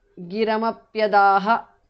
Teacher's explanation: Visarga is dropped because of sandhi.